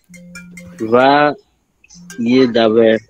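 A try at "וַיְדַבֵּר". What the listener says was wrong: Very nice. Vayidaber. Okay. Very good.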